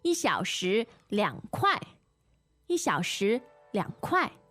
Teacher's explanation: Okay, so kuai, fourth tone, it's the equivalent of saying like $1